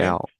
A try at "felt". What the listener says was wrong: Felt. Pronounce the last consonant, the T. Okay, felt, felt, felt.